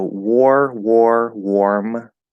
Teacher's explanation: this is an r-colored o